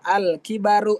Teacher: Jadi dibaca al kibaru, lamnya terdengar jelas. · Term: alif lam qamariyah